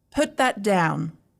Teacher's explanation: this is falling intonation because I'm giving a command with confidence